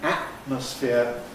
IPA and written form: ˈæʔməsfɪə (atmosphere)